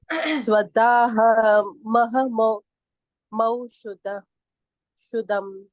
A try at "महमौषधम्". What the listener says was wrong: शुद्धम नहीं, मौषधम्।